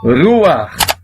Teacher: Primeiro lê o som da vogal, para depois ler o som da consoante no final, que é o CH, com aquele som de 2 R's.